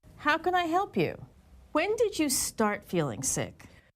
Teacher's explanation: when she asked a question that began with when or how her intonation was falling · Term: falling intonation